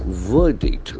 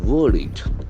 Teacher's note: verdict the middle R silent verdict it's an opinion decision made after judging the facts it's